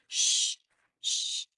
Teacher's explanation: the middle part of my tongue touches the roof of my mouth